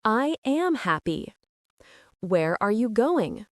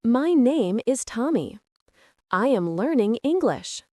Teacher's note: For statements and for WH questions like who, what, where, when, why, your voice usually falls at the end of the sentence. This signals that you are giving information or asking for specific information. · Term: falling intonation